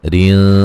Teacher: وما ما الف مدہ ہے، یفعلو لو و مدہ ہے، من نون ساکن کا اظہار ہے، غنہ نہیں کریں گے، خوی خا کو موٹا ادا کریں گے، یا لین ہے، رین را کو باریک پڑا جائے گا، را کے نیچے زیرے ہیں